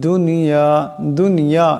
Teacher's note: এখানে জাল আছে আওয়াজটা নরম করে পড়তে হবে দুনিয়া দুনিয়া এখানে নুন সাকিন কিন্তু গুন্না করা যাবে না